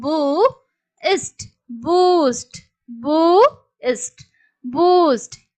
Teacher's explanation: உ ஊ அந்த சவுண்ட் வந்து நமக்கு லாங் சவுண்ட்தான் பட் ரொம்ப நீளமா நம்ம உச்சரிக்க மாட்டோம்